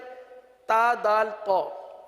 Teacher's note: تو اس کے اندر تا دال طا، ان تینوں کا ایک ہی مخرج ہے. یہ حروف نطعیہ ہیں، زبان کی نوک اور اوپر کے دانتوں کی جڑ سے ادا ہوتے ہیں.